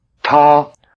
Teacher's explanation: Notice the extra explosiveness of the T.